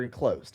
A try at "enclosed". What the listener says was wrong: Enclosed. Enclosed. It's not e-closed. Enclosed. You're saying in.